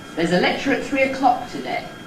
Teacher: the Head is ‘lecture at three o-’, that stretches over all those syllables. · before the Nucleus, we’ve got both the Prehead on those first two unstressed syllables, ‘There’s a’